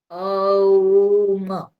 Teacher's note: म माने ओष्ठ्य है, होठ तक आकर के समाप्त हो जाता है। ओम, ये जब एक साथ हम लोग करते हैं दीर्घ रूप से, तो वो हम लोगों को अच्छी तरह से अनुभव होता है कि कैसे ये ध्वनि कंठ से निकल करके धीरे धीरे कंठ से, हाँ, तालु हो करके होठ तक आकर के समाप्त हो जाती है।